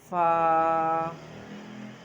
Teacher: نیچے والے ہونٹ کی اندرونی تری سے سامنے والے 2 دانت جو ہیں ان کا سرا لگتا ہے، یعنی کہ کنارہ لگتا ہے۔